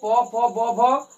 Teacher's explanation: मेरी दोनों होठ आपस में स्पर्श करके फिर बाहर हमारे मुख से वायु निकल रही है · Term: ओष्ठ